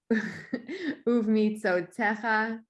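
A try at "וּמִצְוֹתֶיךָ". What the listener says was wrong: I didn't hear the vav.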